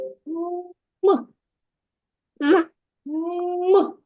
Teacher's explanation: ми промовляємо цей звук зі стиснутими губками а потім вони різко розкривають · звук ми вимовляємо зі стиснутими губами що є перешкодою для виходу повітря